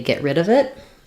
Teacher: Rid is going to be stressed in this phrase. It's the last content word of the phrase.